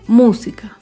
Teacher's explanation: Música se acentúa en la antepenúltima sílaba. Música. Todas las palabras esdrújulas llevan tilde.